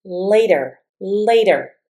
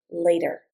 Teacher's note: Notice when I say the word later with my North American accent, the T says a D.